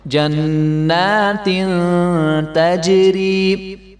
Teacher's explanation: نون کے اوپر کھڑا زبر ہے تو اس کو ایک الف کے برابر لمبا کریں گے. جنات تجری، تجری جیم کے اوپر کلکلا ہوگا.